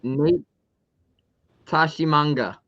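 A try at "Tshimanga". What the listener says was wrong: You sure you pronounce that T? Is it just Shamanga? Or you think it's I think the TSH are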